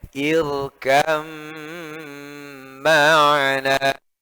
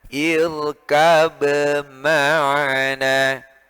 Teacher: Maka ketika ba sukun bertemu dengan mim yang hidup, ya, lafadznya bunyinya irkab ma'ana, maka dibaca idgham jadinya irkam ma'ana, ya, begitu. Ketika diidghamkan berubah menjadi mim yang syiddah, maka dia ada gunnahnya, ya, karena berubah jadi mim tasydid, maka ada dengungnya.